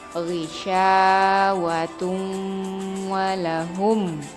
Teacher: Ketika huruf nun mati atau tanwin tersebut bertemu dengan salah satu dari 4 huruf waw, mim, nun, dan ya, cara membacanya yaitu meleburkan nun mati atau tanwin tersebut dengan huruf depannya dan seolah-olah huruf N di nun mati atau tanwin tersebut tidak dibaca sambil didengungkan serta ditahan 2 sampai atau 3 harokat sebelum menyebut jelas huruf di depannya. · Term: idgham bi gunnah